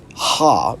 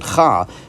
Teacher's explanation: What's being proposed here is that it was spelled the correct way with, the chet, but the chet was pronounced ha rather than cha, and then over time, the pronunciation of the chet changed to cha, so they altered the letter to match the pronunciation.